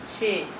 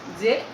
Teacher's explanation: একাক্ষর সর্বনাম পদের এ ধ্বনির উচ্চারণ সংবৃত হয়েছে